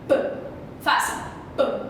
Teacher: O que aconteceu? Os lábios de vocês encostaram e fizeram uma pequena explosão, certo? Então, para o som sair, eu precisei encostar e explodir.